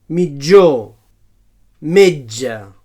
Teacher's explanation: So palatal africat sonor